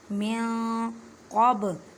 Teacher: बा साकिन है, इस वजह से इसको हिलाकर पढ़ेंगे, कलकला का कायदा करेंगे